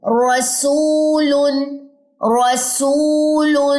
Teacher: را کو موٹا کریں, اقصا لسان پیچھے کی طرف سے اٹھائیے اور ثنایا اور ربائی کے مسوڑوں پہ زبان کے کنارے اور اس کی پشت لگائیں.